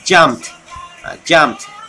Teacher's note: After the sound P, we say the sound of T.